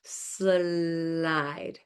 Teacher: we're going from the S sound, which is friction airflow, to an open airflow sound. So it would be like this, slide. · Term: liquid or a glide